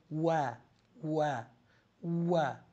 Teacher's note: Du machst eine Runde. Das wird, du machst nicht die beiden Lippen zusammen, sondern du machst wie ein Kreis.